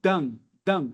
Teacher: A gente nasaliza a vogal que antecede. Então, um brasileiro vai ter a tendência de pronunciar como dan, dan.